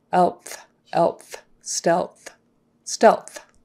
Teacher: So touch for L, blow for TH.